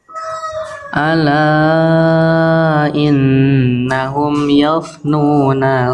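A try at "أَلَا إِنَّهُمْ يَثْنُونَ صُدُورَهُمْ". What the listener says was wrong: Tanya jangan yof. Iyanya tipis, jangan yof. Yof, jangan yof. Jangan yof. Ya, tipis ya.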